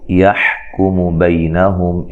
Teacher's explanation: ہا کو واضح نکالنا ہے، کاف کو باریک، میم کو باریک پڑھنا، لمبا نہیں کرنا